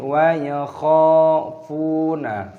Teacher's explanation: 'fu' dibaca panjang dengan sukun 'wau' · Huruf 'kha' memiliki tanda fathah dan alif, dipanjangkan selama dua ketukan. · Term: Mad thabi'i